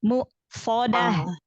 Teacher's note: Hamzah itu jahar syiddah ya.